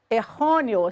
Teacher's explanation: sílaba tônica de errôneo, é a penúltima, RO. Acentuada por terminar em ditongo crescente EO.